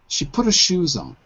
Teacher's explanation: But you didn't stress on. You stressed shoes.